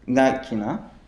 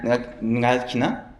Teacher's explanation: you stress the final vowel in the verb. So, like ngalkina, I danced, and ngalkina, did I dance?